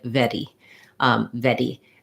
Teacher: that's using that little flap instead of an r sound